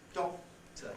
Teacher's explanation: Third point, we don't normally aspirate before another plosive. In a word like doctor, the K there, doctor, you can hardly hear it. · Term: no aspiration